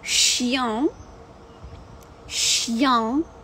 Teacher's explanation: І носовий, знову ж таки, «е» наша з хвилькою, яка дає назальний. Дві комбінації – і «ен», і «ігрек».